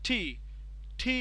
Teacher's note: যখন আমরা বলতেছি টি, টি বললে আমাদের কিন্তু এক ধরনের দাঁতের গোড়া থেকে শুরু করে উপরে তালু প্যালেট পর্যন্ত যেন একটা প্রেসার ক্রিয়েট করতেছে, এবং এইভাবে টিটা তৈরি হচ্ছে।